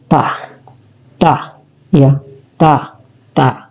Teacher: ta adalah tarful lisan dia keluar di ujung lidah kita